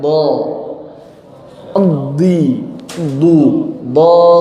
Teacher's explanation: Maka suara huruf D ketika keluar agak sedikit lama. Kenapa? Karena ada prosesnya agak lama.